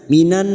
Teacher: fokus pada huruf nun yang bertasdid dan mendengung selama dua atau tiga harokat